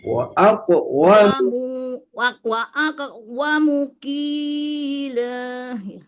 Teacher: Aqwamu. Jangan panjang wawunya, lihat.